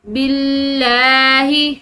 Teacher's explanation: جو لفظ اللہ کی لام ہے وہ باریک پڑی جائے گی